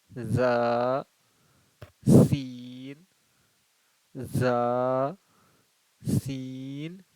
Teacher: جو نیچے کا جو دانت ہے اس سے ہم لوگ زبان کی نوک کو سٹائیں گے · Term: زا اور سین